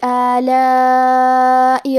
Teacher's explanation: کلمت آلاء میں الف پہ مد کا علامہ ہے، یہ مد واجب متصل ہے، اور مد واجب متصل کا معنی ہے کہ حرف المد اور اس کی وجہ جو کہ حمزہ ہے دونوں ایک ہی کلمہ میں ہوں. اس مد میں ہم اپنی آواز 4 مد کے برابر لمبی کریں گے